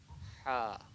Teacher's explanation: اور یہ جو ہا ہے اس میں تھوڑا ایفرٹ لگانا پڑتا ہے. ہا یہ درمیان حلق سے ہے.